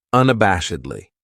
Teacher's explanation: This adverb has five syllables and the stress is on that third syllable that bash unabashedly. That second syllable has that schwa, that uh sound